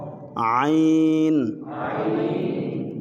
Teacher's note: یہ گلے سے واسطے جو حلق ہے وہاں سے ادا ہوتا ہے بڑا نرمی سے